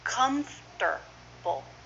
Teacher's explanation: You might hear the T as a D.